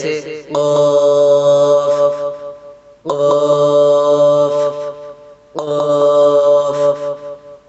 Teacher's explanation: زبان کی جڑ کوے کے قریب جب نرم تالو سے لگے تو اس سے قاف ادا ہوتا ہے